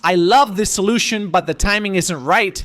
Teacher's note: When an American says, "I love this solution, but the timing isn't right." They're emphasizing love to soften the rejection.